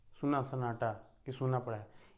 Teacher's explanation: दीर्घ ऊ है, यानी कि ऊ की मात्रा को आपको थोड़ा ज़्यादा समय तक बोलना पड़ेगा